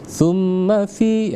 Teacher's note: Maka berlaku hukum wajibal gunnah ya. Wajibal gunnah artinya kita wajib mendengungkan dengan menahan selama 2 harakat ya. Jadi ditahan selama 2 harakat.